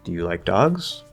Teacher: the first yes or no question we rise we're uncertain